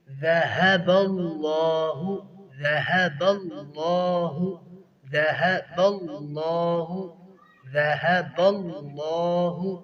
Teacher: ہا کا جو مخرج ہے وہ اقصائی حلق ہے، اقصائی حلق یعنی دور والا حصہ